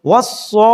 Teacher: پھر اس کے اوپر بڑا مد ہے شد کے ساتھ، تو اس کو پھر 5 درجے کھینچ کر پڑھیں گے